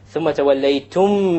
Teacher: Here we have the thumma, mim mushaddad. Mim mushaddad always has a ghunna, always.